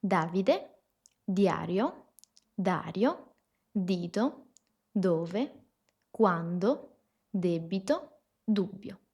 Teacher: La D es oclusiva, esto significa que impide el paso del aire, es dentale, que significa que posicionamos la lengua detrás de los dientes superiores y por último es sonora. De hecho, si ponemos la mano acá, sentimos que las cuerdas vocales vibran. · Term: la letra D